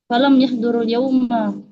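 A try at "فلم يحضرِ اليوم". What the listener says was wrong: Falam yahduril yauma, kalau kita mewasolkan di kasroh rohnya. Falam yahduril yauma.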